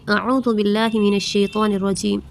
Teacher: واو مدہ کو ہم ایک الف کے برابر کھینچ کر پڑھتے ہیں